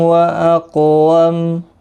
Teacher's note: میم ساکن کے بعد واو اظہار شفوی ہوگا. قاف مستعلیہ ہے پر پڑھا جائے گا، ساکن بھی ہے اس پر قلقلہ بھی ہوگا · میم ساکن پڑھا جائے گا وقف کی صورت میں اور ملانے کی صورت میں اپنی حرکت کے ساتھ پڑھا جائے گا